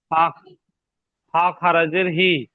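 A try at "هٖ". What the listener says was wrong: হি নয়, হি। টান দিতে অসুবিধা হচ্ছে কি আপনাদের? টান কেন দিচ্ছেন না?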